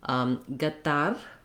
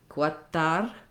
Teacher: And then the first letter is in Arabic called qaf, and different Arabic speakers pronounce that differently. Some do it more like a g sound, some more like a qu sound, like the letter Q.